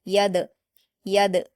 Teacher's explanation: दाल हुरूफ कलकला में से है इसलिए यहाँ पर कलकला किया जाएगा